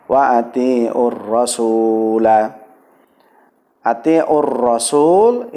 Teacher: lam dianggap tidak ada maka bisa disebut sebagai Idgham Syamsiah ya karena apa di idghomkan dileburkan kepada Hai huruf setelah huruf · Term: alif lam syamsiah